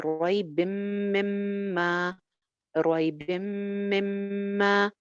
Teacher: बा की जेर को मीम के साथ ज्वाइन करें नून की आवाज खत्म हो रही है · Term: इदगाम